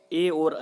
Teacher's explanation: इन दोनों का उच्चारण स्थान क्या है? कंठ और तालु दोनों है। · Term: कंठ तालव्य